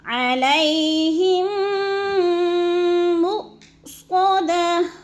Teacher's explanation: ادغام شفوی، سختی سے جماؤں کے ساتھ، غنے کے ساتھ پڑھنا ہے۔ علیہم مؤصدہ، حمزہ ساکن ہے، مؤ پہ حمزہ ساکن ہے، اس کو جھٹکا دے کے پڑھیں گے، مؤصدہ۔